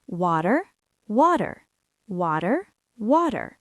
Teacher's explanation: Did you hear that? The T sounds like a D.